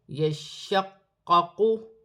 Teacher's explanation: رہا ہے، یہاں بھی الف مدہ ہے، دو حرف مشدد ہے، شین مشدد ہے، قاف مشدد ہے، قاف موٹے حرف میں سے ہے، ان کو جماؤ کے ساتھ ادا کیا جائے گا ، جیسے یا شین زبر یش، شین قاف زبر شق، یشق،